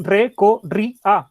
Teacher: La última es A. Sería, si se cargara la voz ahí, sería aguda, pero se carga en la I, que es la grave.